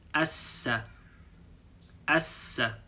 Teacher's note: you hold on this two s sound a little bit longer so we'll make a line like this s then we have